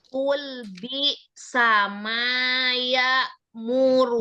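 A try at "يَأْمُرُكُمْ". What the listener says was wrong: Jangan tamtid. Ya murukum. Ya murukum. Jangan ya. Banyak tamtid ya. Jangan diayun harokatnya ya. Jadi langsung aja. Jadi nggak boleh mengayun harokat tuh ya. Menambahkan huruf sama aja menambahkan mat kan.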